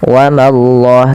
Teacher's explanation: Pada lafal Allah bila didahului dengan fathah maka Allahnya tebal. Wa mallah, tapi ma jangan ikut tebal.